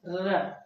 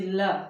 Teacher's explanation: र प्रकंपित व्यंजन है, ल पार्श्व व्यंजन है। ल बोलने में जीभ पीछे जाके मूर्धा का स्पर्श करती, ल है ना, दंत में भी आएगा ये, ऋतु लशा नाम दंत, इचु यशा नाम तालु, ये दंत भी है और पार्श्व व्यंजन भी।